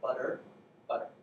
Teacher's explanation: you make a D sound while really rapidly flinging your tongue against the position where the D would be and then down · It's the T sound in butter. If you try to like reproduce it, it's not quite a D, but it's really close. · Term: flapping